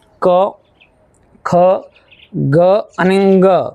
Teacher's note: તો આ જે 5 મૂળાક્ષરો છે તે તમે જ્યારે બોલશો, તમે પ્રયત્ન જાતે પણ કરી શકો, તમે એને જ્યારે બોલો છો તો ત્યારે તે જે અવાજ જે છે તે કંઠમાંથી એટલે કે ગળામાંથી આવે છે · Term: કંઠ્ય વ્યંજનો